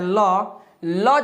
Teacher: ल अगर बोलते हैं, ल जैसे बोलते हैं तो जीभ हमारे दांतों में टच कर रहा है, तो यहाँ पे इसका उच्चारण स्थान कहाँ होगा, तो दंत हो जाएगा, दंत।